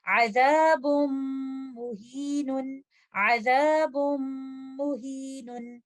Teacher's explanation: میم، یہاں پر بھی نون ساکنہ کے ادغام کی کنڈیشنز ہیں، یہ ادغام ادغام کامل ہوگا، غنہ کے ساتھ ہوگا، موسٹ کمپلیٹ غنہ کا ٹائم دیتے ہوئے